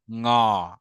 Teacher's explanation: আপনার ঠোঁট থাকবে একদম স্বাভাবিক ভাবে, বাতাসটা বের হবে, কণ্ঠ গিয়ে শুধুমাত্র লাগবে, আর জিহ্বাটা একদম সফট প্যালেট, অর্থাৎ নরম তালুতে গিয়ে লাগবে।